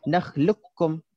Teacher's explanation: hafs kita akan baca dengan qaf ni kita masukkan terus kepada kaf. Hilanglah qaf ni.